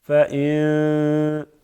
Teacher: اخفا کرتے ہیں, یعنی آواز کو تھوڑی سی ناک کی طرف کے لے کے جاتے ہیں. فَإِن یوں پڑھتے ہیں پھر فَإِن كَذَّبُوكَ.